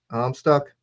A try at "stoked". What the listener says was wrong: I'm stoked. I'm saying stoked. You're saying stuck.